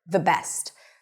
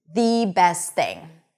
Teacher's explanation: But when I emphasize it, it turns into thee